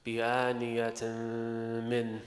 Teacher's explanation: What you merge? merging the nun sakin of the tanween with the meme. Merge the noon sakin in the tanween in the meme. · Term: idgham maghunna